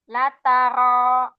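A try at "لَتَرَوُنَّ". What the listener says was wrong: Nah ini masih kelebihan lagi. Ro, Jadi jangan di R-nya jangan di terlalu keras, jangan lataro. Nah, jangan ditekan. Lataro, ditarik ke dalam, cuman maksudnya getarannya jangan keras-keras. Mungkin pernah masa kecil dulu pernah dibilang R-nya kok kayak cadel, kayaknya biasanya pernah digituin.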